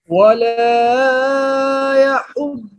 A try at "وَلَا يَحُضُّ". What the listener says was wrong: ये वाला ज्यादा लंबा हो गया है।